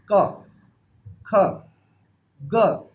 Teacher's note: तो जो ये स्थान है, जो आपका ये गला है, इसको बोलते हैं कंठ। अब जीभ का जो अंतिम भाग है, यानी कि जो जड़ है जीभ की, वो गले को टच होती है।